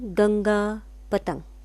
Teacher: इसे अनुस्वर कहते हैं. उच्चारण नाक से होते हैं.